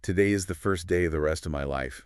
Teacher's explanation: the stress syllables are to, first, day, rest, and life.